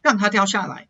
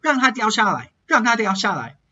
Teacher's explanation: Here you can hear my ta kind of sounding like a na.